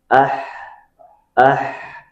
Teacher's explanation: makhrajnya benar-benar keluar dari tengah tenggorokan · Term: huruf ha